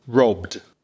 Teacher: So, BBB is a voiced consonant. And then you've got the E d, which is a d after a voiced consonant.